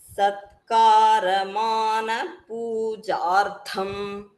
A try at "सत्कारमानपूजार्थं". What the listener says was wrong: Satkara, I heard it as Tatkara.